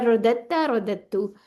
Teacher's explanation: قریب المخارج ہونے کی وجہ سے دال نہیں پڑھا جائے گا